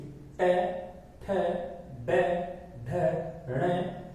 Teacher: मूर्धा का मतलब होता है हमारी जीभ, जो हमारी जीभ होती है वो उल्टी आकर नीचे लगती है। ट, ठ, ड, यानी कि ऊपर का हिस्सा है ना, ट, ये जो यहाँ का हिस्सा है उससे टकराकर सांस बाहर आती है और हमारी जीभ उससे टकराती है, इसलिए इनको उच्चारण वहां से होता है। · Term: मूर्धन्य